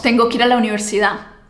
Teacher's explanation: El primer fenómeno es la caída de la D al final de las palabras. En el habla cotidiana casi ningún nativo pronuncia esa D al final de forma muy marcada.